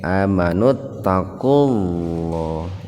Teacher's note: Lafaz Allahnya dibaca tafkhim, ya, atau lebih tepatnya huruf lamnya dibaca tebal, tafkhim